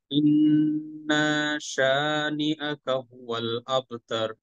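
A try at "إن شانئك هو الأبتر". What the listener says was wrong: আচ্ছা, শেষের ইন্নাটাতে টান নাই। আবার বলেন।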